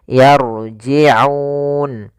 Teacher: hati-hati juga di sini huruf Ain Jangan dibaca yarjiun dengan Hamzah tapi dia Ain